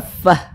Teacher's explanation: kita panjangkan dulu 6 harokat ya, baru di ujungnya itu dikasih naber. Tadi di awal sudah kami jelaskan naber itu adalah penekanan pada huruf-huruf tertentu sehingga intonasi suaranya itu sedikit lebih tinggi dibanding huruf di samping-sampingnya.